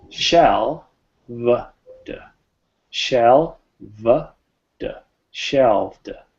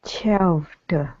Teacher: Shell. So we're getting that shell, and then we're going to a v, shelv, a very voiced v, and then a final d. Shelved.